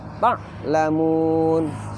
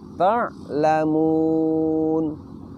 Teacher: kita ucapkan dari tengah tenggorokan nafasnya tertahan tetapi suaranya sedikit dilepaskan